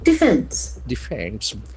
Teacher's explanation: So it has got two syllables and the accent falls to the second syllable.